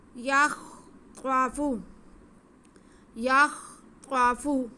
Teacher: خا تھوڑا سا منہ گول کر کے ادا کریں گے تو صحیح ادا ہوگا۔ یخ، یا کو خا کے ساتھ ملا کے پڑھیں گے۔